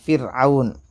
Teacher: را ساکن سے پہلے زیر ہے تو یہ را باریک ہوں گی